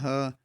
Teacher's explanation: तो ह का उच्चारण स्थान क्या है यह कंठ है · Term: कंठ ध्वनि